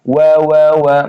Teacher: Wa mencucu makhrajnya bibir ya syafawiyah huruf bibir.